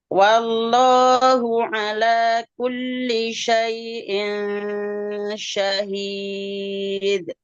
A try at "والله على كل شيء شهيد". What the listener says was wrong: Baik, nanti kafnya dikurangi sedikit, jangan terlalu masuk. Sumal kafu asfalu. ya, jangan terlalu masuk. Misalnya ku misalnya. ya benar. Ya